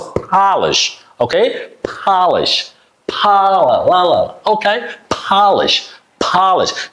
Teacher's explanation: there are two unvoiced consonant sounds in this word. The first P sound is unvoiced consonant sound, and the last sh sound is also unvoiced consonant sound.